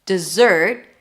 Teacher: And then dessert, stress on the second syllable